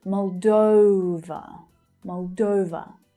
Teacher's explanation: The main stress, in the second syllable is pronounced as /əʊ/ like the verb 'go'